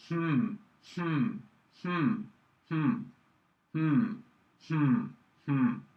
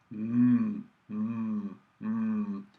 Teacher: this indicates that the air is leaving the body through the nostrils, through the nose. And that is what happens with the nasal sound.